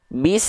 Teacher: dalam kondisi diaam tidak berharakat alias su sukun Sin sukun maka ketika kita lafalkan dia enggak keluar bunyi vokal a iu-nya